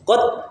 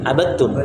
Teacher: tidak dibaca qalqalah dan tidak lagi terbaca dalnya, tapi masuk idgham sempurna.